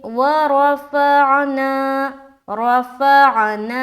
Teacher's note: रा को भी मोटा, फ़ा में आइन निकाल रहे, ना में अलिफ मद्दा कर रहे